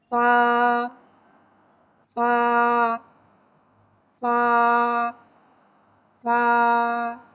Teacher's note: فا حرف شفویہ ہے، زبان اوپر کے دانتوں کے کنارے اور نچلے ہونٹوں کے تر حصے سے ادا ہوتا ہے۔